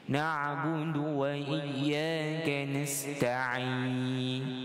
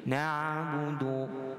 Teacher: bacaan ain dia sifat dia tersangkut. Tetapi dia tidaklah melekat. Dia sangkut sikit baru dia keluar.